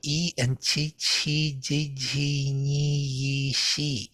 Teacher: So Chi is palatal, E is palatal